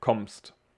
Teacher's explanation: So here we have also, well, woher, which is not really special to pronounce, but kommst, we have two M's, and this is just like also a strong M, like kommst. We don't say kommst with two M, but we just say a long and strong M.